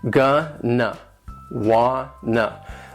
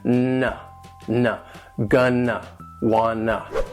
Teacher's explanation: They sound like one word that would have 2 syllables, and the stress is on the first syllable. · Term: gonna and wanna